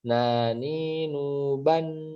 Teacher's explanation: secara makhraj dia ketutup sebenarnya. Gitu kan, tertahan, tapi masih ada aliran suara yang keluar. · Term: tawasud